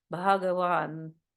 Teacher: the word Bhagavan has again a bit of an aspirated H. It's not Bhagavan, it's Bhagavan.